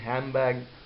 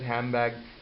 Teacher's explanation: the sound of d has been removed and the sound of m has been added instead of n here